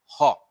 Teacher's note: तो जो हमारा काक है, काकू है या मुख गुहा है, ये खुल जाती है जिन ध्वनियों या जिन व्यंजन ध्वनियों के उच्चारण में हमारा मुख गुहा खुली रहती है, वायु बंद कंठ को खोल करके झटके से बाहर निकल पड़ती है, उसे ही हम काकल्य ध्वनियां कहते हैं।